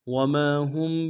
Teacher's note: گے، میم کے ساتھ الف مدہ ایک مقدار میں کھینچیں گے، ہا کو میم ساکن کے ساتھ ملانا ہے، میم ساکن میں غنہ کریں گے۔